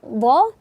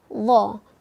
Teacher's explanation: huruf yang pertama tadi dha kita baca tepi lidah, dha, dan huruf setelahnya itu ujung lidah menempel gigi seri atas, dha. Kemudian kita monyongkan sedikit mulut kita, dha.